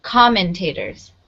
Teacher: it has the first syllable underline because that's where the stress is